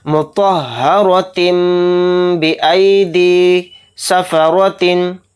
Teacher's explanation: रॉ के ऊपर ज़बर है तो यहाँ पर रॉ मोटा पढ़ा जाएगा, यानी मुँह भर के पुर पढ़ा जाएगा, और पौ भी मोटा पढ़ा जाएगा, यानी मुँह भर के।